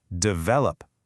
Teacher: The mistake is to say develop. But the real energy, the real stress, is right there in the middle. Develop. That vowel is the heart of the word.